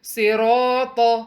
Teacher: اس word میں تمام letters heavy ہیں، صاد ہیوی ہے، را ہیوی ہے، الف مد ہیوی ہے، طا ہیوی ہے